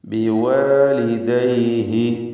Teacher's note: ബിവാലിദൈഹി ഹ ഉദ്ദമീറിന് അല്പം പോലും ദീർഘം വരുന്നില്ല, കാരണം തൊട്ടുമുമ്പിൽ സുക്കൂൻ ഉള്ളതുകൊണ്ട്